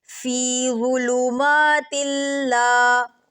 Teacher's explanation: ظو موٹا پڑھا جاتا ہے اور نرم پڑھا جاتا ہے